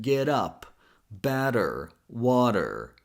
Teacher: sounds more like a fast D. It's pronounced with the tip of the tongue. For example, as in get up, better, water.